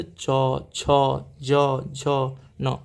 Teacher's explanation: च वर्ग जो है आपका तालु से बोला जाता है